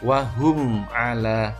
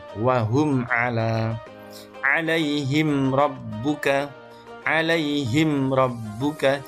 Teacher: cukup mingkemnya atau bunyi m-nya cukup satu ketukan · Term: idhar syafawi